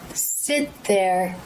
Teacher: Rather than the tongue going up into the stop T position, it simply comes out of the vowel straight into the TH position. However, I don't leave the stop T out.